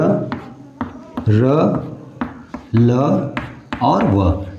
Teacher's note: अंतस्थ व्यंजन क्या होता है मेरे भैया, मेरे दोस्त, कि वह व्यंजन जब उच्चारण किया जाए तो न तो वह जिह्वा, जो जिह्वा हमारा है, न तालु को स्पर्श करे न नीचे स्पर्श करे, बल्कि हवा में लहराता रहे